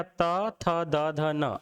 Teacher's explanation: अब जब ता, था, दा, ध, न का उपयोग करेंगे तो हमारी जीभ कहाँ लगेगी? दांत में। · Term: दंत्य